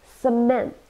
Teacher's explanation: two syllables and we stressed the second one